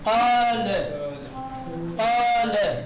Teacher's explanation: قاف حروف استعلا ہے نا، مفخم پڑھا جاتا ہے، اس کے بعد الف مدی آ گئے تو الف مدی کو بھی مفخم پڑھیں گے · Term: تفخیم الف مدی